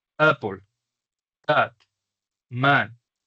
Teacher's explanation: la pronunciación exacta es como una A y una E al mismo tiempo, es como una como una A perezosa, eh. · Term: A corta